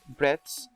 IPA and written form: bredθs (breadths)